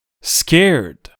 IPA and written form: skerd (scared)